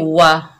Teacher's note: वाव के ऊपर ज़बर, बगैर खींचे पढ़ेंगे वा, होंठों की नातमाम गुलाई से वाव अदा होगा, होंठों को गोल करके पढ़ेंगे